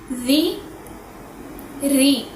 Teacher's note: را کے نیچے زیر ہے، اس کو ہونٹ گول کر کے نہیں پڑھیں گے ورنہ یہ پر ہو جائے گا۔